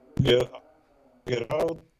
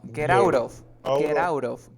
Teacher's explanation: you have a t between two vowel sounds you pronounce like r